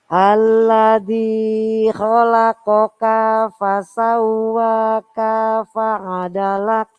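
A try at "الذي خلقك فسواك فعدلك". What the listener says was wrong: Pendek Ibu. Kalau pendek berarti langsung masuk di huruf depannya.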